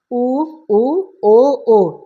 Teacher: हमारा जो ओठ है ना हल्का गोलाकार खुल रहा है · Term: वृत्तमुखी स्वर